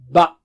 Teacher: دونوں ہونٹوں کے اندرونی حصے کو تھوڑا سے اندر، ان کو ملانے سے با ادا ہوتا ہے